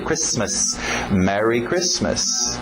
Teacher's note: O T é mudo, não pronuncia esse T.